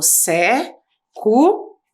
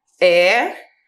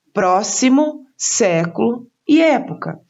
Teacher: Por terem a sílaba tônica, a sílaba mais forte na antepenúltima sílaba, são chamadas de proparoxítonas.